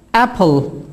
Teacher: Dikkat edin, EA arası bir ses çıkıyor.